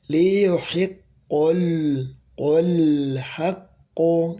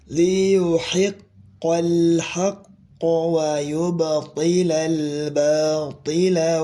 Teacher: Huruf qof tebal tafkhim tapi lam di sini tipis tarqiq ya tarqiq maka huruf lamnya tidak boleh tebal ya